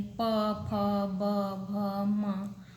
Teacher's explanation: ओष्ठ का स्पर्श हो रहा है